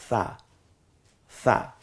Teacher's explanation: সাটা নরম আওয়াজে, জিব্বার আগা সামনের দাঁতের আগার সাথে মিলালি নরম হয়ে যাবে